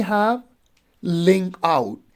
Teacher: link would be unstressed and out would be stress